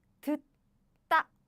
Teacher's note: So when there are two same consonants bumped each other, the later one becomes double.